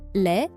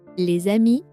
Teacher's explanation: And suddenly the S comes back in as a Z, that is a liaison.